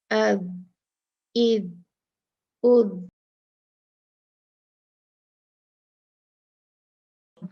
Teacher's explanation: دانتوں کے اوپر کے دانتوں کے کناروں کے پاس، ٹچ کرنا ہے، اور جو ہے ذا کی آواز نکالنی ہے